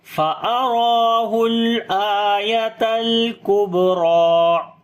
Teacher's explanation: با کے اوپر صفت قلقلہ کریں گے، یعنی کمزور قلقلہ ہوگا، را کو موٹا پڑھیں گے، اس کے اوپر کھڑی زبر ہے، لمبا بھی کریں گے